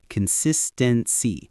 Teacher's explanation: Notice the stress is on that second syllable, sis.